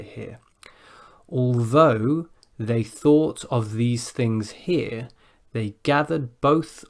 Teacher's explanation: there's quite a lot of voiced th in that tongue twister but also a couple of unvoiced th's